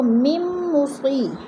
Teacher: میم مصی، میم کو میم کے ساتھ ملا کر ادغام کریں گے، درمیان والا نون ساکن نہیں پڑھا جائے گا، لکھنے میں آتا ہے اور پڑھنے میں نہیں آتا